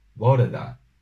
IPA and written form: bɔ.ɾɛ da (bore da)